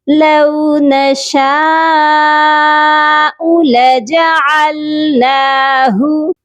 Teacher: عین کی آواز حلق سے آئے گی اور ہا کو سیدھے والے حلق سے ادا کیا جائے گا